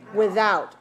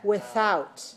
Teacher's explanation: this can be pronounced in two ways either voiced without or voiceless without